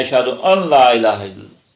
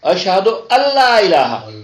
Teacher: ہم اذان میں، اقامت میں بعض اوقات نہ جانتے ہوئے پڑھ جاتے ہیں اشہد ان لا الہ الا اللہ. وہ ان نہیں ہے، وہ نون وہاں گم ہے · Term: ادغام